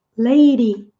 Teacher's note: O D entre vogais também, sons de vogais, tem esse fenômeno de ser pronunciado como se fosse um R fraco.